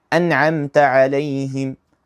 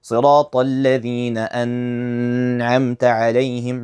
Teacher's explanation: I didn't add, for example, a type of hold to it, like a ghunna. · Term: idhar